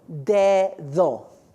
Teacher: in Spanish, we use that medial D for TH, voiced · When the letter D in Spanish is between 2 vowels, it says th, like in English.